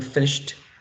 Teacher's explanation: Now, the next one, finished, we already know is t, because it's voiceless, right? Now, the initial sound is a voiceless sound as well. It's fricative and it's labiodental.